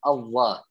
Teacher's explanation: ketika tebal jangan teman-teman memojokkan bibir Allah Allah seperti itu karena huruf tebalnya huruf lam itu bukan berasal dari moncongnya bibir tapi naiknya pangkal lidah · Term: huruf lam menjadi tebal